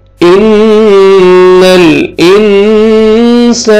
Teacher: नून मुशद्दद है, गुन्ना करेंगे, लाम के साथ मिलाएंगे